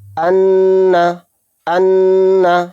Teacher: صحیح اس طرح سے ہے حمزہ نون زبر ان، نون زبر نہ، ان، ان، یعنی ناک میں نا کی آواز جو روک رہا ہوں ناک میں، اسی کو غنہ کہتے ہیں